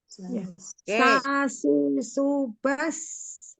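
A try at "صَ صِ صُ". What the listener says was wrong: Nah, sekarang usahakan pangkal lidah naik. Masalahnya pangkal lidah bukan bibirnya dibulet-buletin enggak, tapi pangkal lidah. Jadi so dari sa jadi so, dari si jadi osi, dari su malah susah di su ya. Su jadi osu dan bas jadi bas. Dan tetap harus ada sofirnya, ada rohwahnya.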